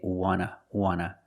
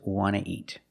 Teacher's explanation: So we don't pronounce the T and we say wanna.